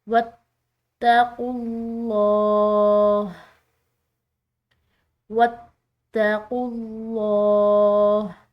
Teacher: لفظ اللہ کی لام پورا ادا کی ہے کیونکہ اس کے پیچھے والا حرف پیش کے ساتھ ہے